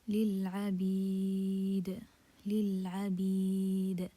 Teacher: Okay, it's due to stopping. So we remove the kasra and put sukun due to stopping. And before this sukun, we have a mad letter. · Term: mad عارض للسكون